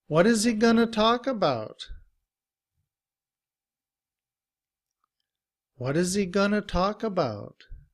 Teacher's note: And going to becomes gonna. What is he gonna talk about?